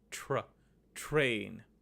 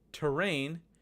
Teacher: week was train because the TR in train formed a cluster there was no vowel in between the T and the R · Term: consonant cluster